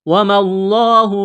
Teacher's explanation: لفظ اللہ کے نام سے پہلے زبر ہے، لفظ اللہ کے نام کو موٹا کرنا ہے